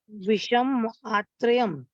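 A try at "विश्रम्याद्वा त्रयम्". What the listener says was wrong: नहीं आत्रयम नहीं, विषम्याथ, विषम्याथ।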